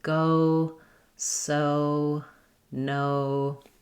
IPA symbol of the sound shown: oʊ